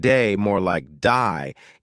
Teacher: Australian accent they may say words like day more like die